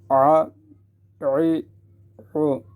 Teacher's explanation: گلے کے درمیان سے آواز ایک الگ آواز نکلے جس سے پتہ لگ رہی ہے عین ادا ہو رہا ہے